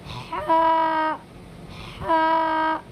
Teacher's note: ह को बिल्कुल हलक से निकालना है। हलक के बीच वाले हिस्से से। · ہا کو بالکل حلق سے نکالنا ہے، حلق کے بیچ والے حصے سے